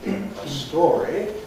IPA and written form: ə ˈstɔːri (a story)